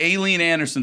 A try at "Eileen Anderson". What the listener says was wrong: You have to say Eileen Anderson. You can't go Aileen Anderson. Aileen, pause, Anderson. Aileen Anderson.